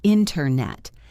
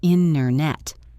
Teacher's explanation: In careful speech, we say internet, but in fast speech, the T vanishes, and it sounds like internet.